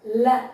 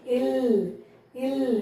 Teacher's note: முதல்ல இந்த லகரத்தை எப்படி உச்சரிக்கிறதுன்னு பார்க்கலாம் வாயை நல்லா தொறந்துக்கோங்க ல அதாவது பல்லுக்கு பின்புறம் தொட்டு சொல்லக்கூடிய லகரம் தான் இந்த மெல்லின லகரம்